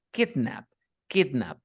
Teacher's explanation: El verbo kidnap, que sería, es una excepción a la regla. Dice, la primera sílaba tiene el estrés